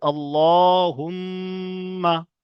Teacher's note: তারপরে লামের উপরে খাড়া জাবার আছে, একাধিক পরিমাণ টান দিচ্ছে এখানে। মিমের উপরে তাসদিদ আছে, গণ্যা করা ওয়াজিব, তাই আমরা এখানে গণ্যা করছি